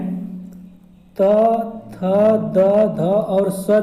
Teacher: दंत वे ध्वनियाँ होती हैं जिनमें जीभ जो है दांतों के पिछले भाग को छूती है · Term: दंत्य